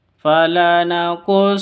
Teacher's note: Nun tasdid bacanya dengung gunah musyaddada